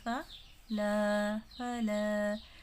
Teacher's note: صرف الف مدہ کو ایک الف کے برابر لمبا کریں گے۔